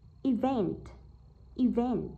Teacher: vậy trọng âm rơi vào âm thứ hai, rơi vào từ vent